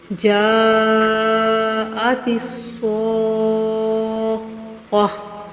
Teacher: جو گول تا ہے اس کو ہائے ساکنہ سے بدل کر پڑھیں گے. ٹھیک ہے، گول تا وقف کی حالت میں ہا پڑھی جاتی ہے اور ہا ساکن پڑھی جاتی ہے